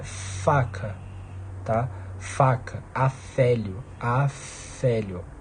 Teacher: O ar continua passando, você só obstrui, você só interrompe parcialmente a passagem do ar. Então ele passa menos, beleza?